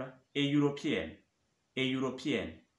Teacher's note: Par exemple, a European, a European, European qui s'écrit EU, European, mais ici on a un son consonne, c'est-à-dire ye